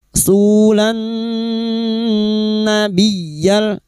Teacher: narrasula narrasula su di madikuti wu sukun dua harakat mad thabi'i sulan suulan dua diikuti wau sukun dua harakat mad thabi'i lanna lam takrif yang bertemu nun idgham syamsiyah dan huruf nun kita dengungkan selama tiga harakat